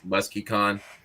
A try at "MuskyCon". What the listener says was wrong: MuskyCon. Musky. Like it like a smell. It's not musky. MuskyCon. Emphasis on the key.